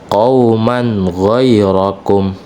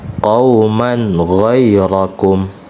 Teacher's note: Di sini ada tanwin bertemu dengan ghain, ya. Jadi tanwin dibaca jelas.